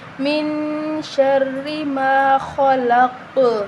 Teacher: را کے نیچے زیر ہے، ٹھیک ہے؟ تو ہم اس کو را کو باریک پڑھیں گے۔ اگر را کے اوپر زبر ہوتی یا پیش ہوتی تو تب ہم را کو موٹا پڑھتے۔